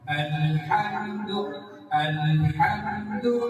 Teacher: লাস্টের ঢেউটা হবে নিচ থেকে উপরের দিকে।